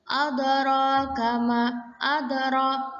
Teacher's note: dal ini sebagian huruf dari qalqalah. Jadi kita pantulkan tapi tipis. Kemudian ro ini menyandang harokat alif, harokat panjang.